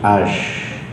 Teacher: Ash, sinnya di tengah lidah. Ash, bukan as, bukan as, tapi ash.